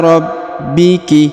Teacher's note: huruf ba berharakat tasdid ya atau huruf b maka dia ditahan dan ditekan karena berharakat tasdid